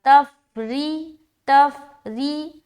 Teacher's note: ری نہیں بولنا، ری بولیں گے تو غلط ہو جائے گا، را کے نیچے زیر آتا ہے تو را کو باریک رکھنا پڑتا ہے